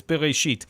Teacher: the bet is vocalized with a schwa